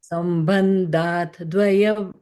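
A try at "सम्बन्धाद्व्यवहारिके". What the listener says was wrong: It is not Dvaya. It is Sambandhat and Vyavaharike.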